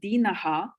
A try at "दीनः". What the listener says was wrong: Dina is not Dina. This is long.